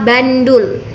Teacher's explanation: N yang merupakan asalnya itu nasal apikoalveolar berubah menjadi nasal apikopalatal disebabkan oleh pengaruh secara regresif dari bunyi letup apikopalatal yang dihasilkan oleh huruf D